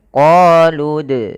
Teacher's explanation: Dalam pelafalannya kita harus memantulkan dalnya. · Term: qalqalah